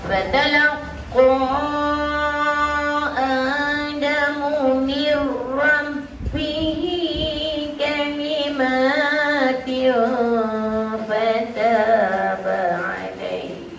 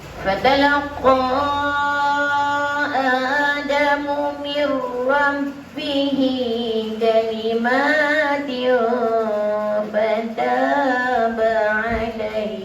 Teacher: Fatalaqa idgham bila gunnah, masukkan ra ke dalam masukkan nun ke dalam huruf ra